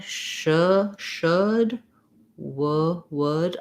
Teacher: I do have to open my jaw a little more between should and would, because I have to close for the W.